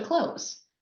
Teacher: And I lightly tap the top of the roof of my mouth just behind my front teeth. And you can barely hear the TH. So when I say the word clothes, I say close, like close the door.